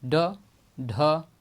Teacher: ये दोनों जो हैं उत्क्षिप्त वर्ड कहलाते हैं। इनका उच्चारण में जीभ ऊपर उठकर झटके से नीचे की तरफ आती है